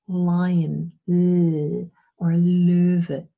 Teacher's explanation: I use the tongue to impede the airflow but the airflow can escape along the side of the tongue sometimes also um above the tip but mainly along the sides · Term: laterals, Laterals